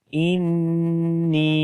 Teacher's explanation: تو یہ زیر ہے، زبر نہیں ہے، تو اس وجہ سے ایک تو یہی یاد رکھیں، اور دوسرا نون کے اوپر شد ہے تو غنہ کریں گے، آواز کو ناک کے اندر لے کر جاتے ہیں اور لمبا بھی کرنا ہے۔ انی، تو یہ جو ان کی آواز ہے یہ غنے کی آواز ہے، اور نی کو جو ہم نے لمبا کیا وہ یا مدہ کی وجہ سے، یعنی کہ یا کے اوپر جب جزم آ جائے اور اس سے پہلے زیر ہو تو وہ یا مدہ ہوتی ہے، تو یہاں پر یا مدہ ہے۔